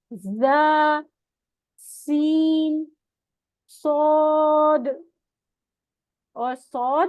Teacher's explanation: जबान की नोक नीचे वाले सामने के दो दांतों के मसूड़ों से लगती है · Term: सीटी वाले हरूफ